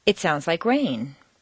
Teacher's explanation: Rain is the new information. It's the most important word in that sentence, and you could replace everything else with da-da-da.